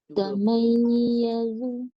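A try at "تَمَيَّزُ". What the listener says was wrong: Belum naik lagi tu. Cuba lagi. Naikkan tengah lidah.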